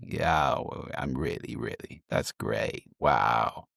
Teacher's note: Vocal fry sounds like this. It's creaky way of speaking.